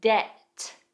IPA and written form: det (Debt)